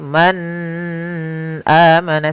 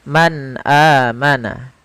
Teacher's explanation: suara nunnya harus jelas, tidak boleh ditahan, tidak boleh man amana, tidak, tapi langsung saja man amana. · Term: izhar